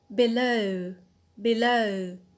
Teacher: So here the stress is on the alt, that is the last syllable